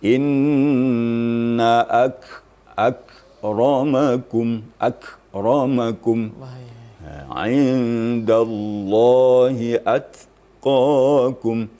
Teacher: Kaf apabila sukun atau mati, maka mahmusnya lebih maksimal gitu ya.